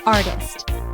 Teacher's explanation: It has 2 syllables. The stress is on the first syllable.